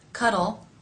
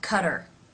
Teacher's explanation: tongue tip touching behind the front top teeth for the L Sound and the lips are still somewhat rounded for the r sound